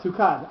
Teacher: Right, but I think like you said tukad. Without laning, how would you pronounce tukad? Tukad, on the last syllable. Tukad, right. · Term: milra